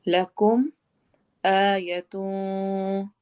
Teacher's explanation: یتون میں اخفا ہو رہا ہے، نون کی آواز کو چھپائیں گے